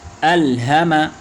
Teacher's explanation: وقف کی حالت میں الہم پڑھیں گے، آخری حرف ساکن کریں گے